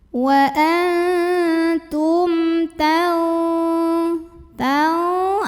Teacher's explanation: Lalu berikutnya ada hukum idhar syafawi karena mim sukun menghadapi huruf selain mim dan ba yaitu huruf ta. Maka mim sukun dibaca secara idhar atau jelas, bunyi M-nya jelas, tidak ditahan.